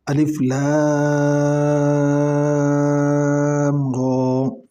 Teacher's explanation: لام کو جو ہے 5 الف کی مقدار کھینچنا ہے اور را کو 1 الف کی مقدار کھینچنا ہے